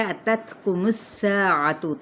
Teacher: میم کی پیش کو سین کے ساتھ ملائیں گے، جبکہ سین پہ سیٹی کو واضح کرتے ہوئے الف مدہ کا قاعدہ، یعنی ایک الف کے برابر کھینچنا۔